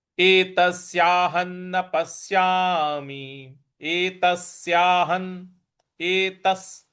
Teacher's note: यहाँ पे त के बाद जो स है उस पर हमको आघात देना है।